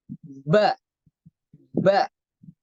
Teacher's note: Untuk tekanan suaranya, untuk huruf ba itu kuat, ya, syiddah.